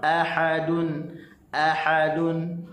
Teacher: a halkum bawah, a, ha halkum tengah